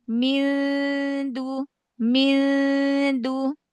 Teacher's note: Ikhfa nun ketemu dal lisannya ujung lisannya jangan nempel ke nun, jangan nempel ke dal.